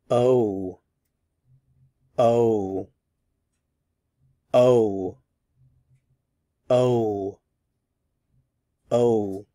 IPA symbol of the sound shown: oʊ